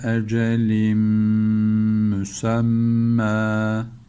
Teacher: idgam meal gunne yapıyoruz tenvinden sonra mim geldiği için